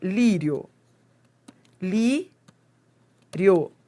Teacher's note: Esse I é a semivogal e o O é a vogal. E o O é a vogal, que é o som mais forte. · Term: ditongo crescente